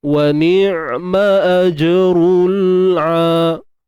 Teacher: Untuk huruf ain tuan-tuan dan puan bersifat tawassut ataupun bainiyah, yang mana suara tidak tertahan dan tidak mengalir di tengah-tengah.